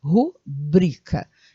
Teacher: Se não é proparoxítona, você tem que realmente acentuar a sílaba, acentuar, que eu digo, quer dizer, falar com mais força a sílaba tônica, que seria a segunda sílaba, ou seja, rubrica, e não rúbrica, tá bom?